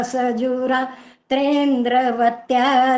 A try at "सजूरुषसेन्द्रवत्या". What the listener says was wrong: गलतियां हो गई हैं, आपको पता शायद नहीं लगा। सजु रुषसेन्द्रवत्या है यहाँ पर, सजु रात्रेंद्र नहीं है यहाँ।